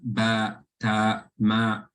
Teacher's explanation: the tongue lies flat. Therefore, there's no heaviness, or it's read with a, you can say an empty mouth, like ba, ta, ma, right? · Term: istifal